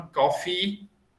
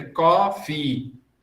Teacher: Na verdade, são dois acentos, é coffee. Tanto o có quanto o fi são tônicas. As duas são acentuadas.